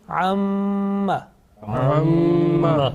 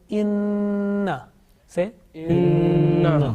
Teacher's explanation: this time gunna means continuous nasal sound for about two seconds sustained continuous nasal sound for about two seconds in pronunciation and it is produced from nose pipe you know the nose pipe there are two kinds of gunna